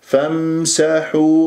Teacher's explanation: لا تقلقل الميم، الميم ليست من أحرف القلقلة